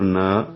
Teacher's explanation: نا 2 حرکات لمبا کریں گے، کیونکہ زبر کے بعد یعنی نون کے اوپر جو زبر آئی ہے اس کے بعد الف خالیہ ہے تو یہ مد اصلی الف مدہ بن جاتی ہے۔